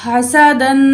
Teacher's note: हा निकाल के पढ़ेंगे, सीन को सीटी के साथ पढ़ेंगे। दाल 2 ज़बर मीम दम।